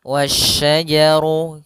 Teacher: Alif lam syamsiyah yaitu langsung ke huruf syin. Dan di sini hati-hati jangan sampai terbaca huruf syin apa?